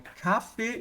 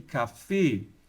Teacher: A tônica está aqui no E e aqui a tônica está no A.